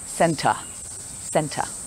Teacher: The word center has two E's, but the pronunciation of them is different. The first E is pronounced eh, center, and the last E is a schwa sound